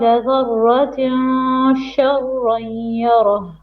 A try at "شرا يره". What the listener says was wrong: Again, sharrain, two beats.